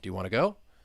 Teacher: That rising intonation as we go to the end of that question.